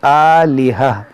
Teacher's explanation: مگر گولتا کے اوپر جب دو زبر آئے گا تو اسے ہم جو ہے ہا ساکنہ سے ہی بدلیں گے. اس کو پڑھیں گے آلہہ.